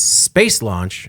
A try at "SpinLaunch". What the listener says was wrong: Spin launch. You said space launch.